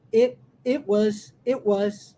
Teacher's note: Repare que eu engulo o som do it